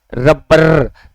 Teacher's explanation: रे हमारा क्या होता है, 2-3 बार उसमें जीभ क्या होती है, लुढ़कती है। तो उसको अपने क्या कहेंगे, उसको अपने कहेंगे प्रकंपित या फिर लुंठित व्यंजन।